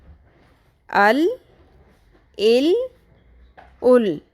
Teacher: لام کی آواز باریک ہوتی ہے